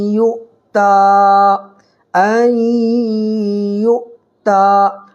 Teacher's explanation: کھڑا زبر برابر ہوتا ہے الف مدہ کے، الف مدہ کو ایک الف برابر کھینچ کر کے پڑھتے ہیں